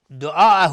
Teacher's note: مد واجب متصل به مقدار 4 تا 5 حرکت وجوبا مد میخواد. دعاءه های ضمیر مد صله صغراست.